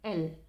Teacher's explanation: The sounds that is produced by the air escaping from the mouth and sides of the tongue, as the sound of L. The air comes out from the sides of the tongue, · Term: lateral sounds